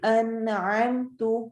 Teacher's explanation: ان میں نون کو واضح کر کے پڑھنا ہے، اس کو کر کے نہیں پڑھنا.